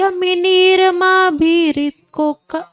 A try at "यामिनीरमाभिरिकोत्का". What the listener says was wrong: कोका नहीं कोका Cola नहीं है, ये कोतका है। This is कोतका कोला।